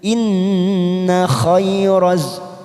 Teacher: nun yang bertasdid kita tekan selama 3 ketuk bacaan gunnah. Inna khairaz, khairaz masuk pada huruf raz, masuk pada huruf zain yang bertasdid.